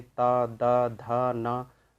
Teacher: ता वर्ग के जो 5 अक्षर हैं उनमें से कोई सा भी अक्षर का अगर हम उच्चारण करते हैं तो हमारी जीभ दांत से टकराती है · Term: दंतव्य